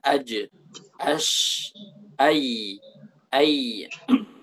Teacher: Kita dapati lidah itu naik ke atas. Tengah lidah naik ke atas.